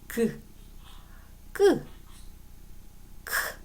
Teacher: 혀의 뒷부분이 여린 입천장에 되어서 나는 소리예요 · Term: 여린입천장 소리, 여린입 천장 소리